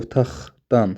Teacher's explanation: otaqdan x ilə tələffüz olunur